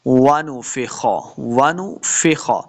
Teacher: وَنُفِخَ، وَنُفِخَ، لمع بالکل نہیں کریں گے، خا کو موٹا پڑھنا ہے، یہ خا کا سائن بنا ہوا ہے، خا ہے نون نہیں ہے، خا پڑھا جائے گا۔